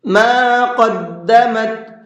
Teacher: قاف کو منہ بھر کے پڑھیں گے